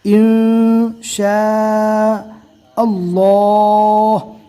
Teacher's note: اللہ کے لام سے پہلے زبر ہے اس لیے اللہ کے لام کو پور پڑھا جائے گا اور شاء اس کو کھینچ کر پڑھنا ہے.